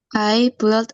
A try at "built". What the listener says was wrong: I built. Nah, cara bacanya, U-nya nggak usah dibaca, langsung aja pakai I-nya ya. Build.